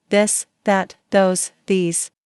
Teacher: your tongue touch your teeth lightly but use your voice. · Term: softer version of th